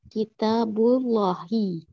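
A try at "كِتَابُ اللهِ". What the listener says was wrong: Ahsanti. Barakallahu fiik.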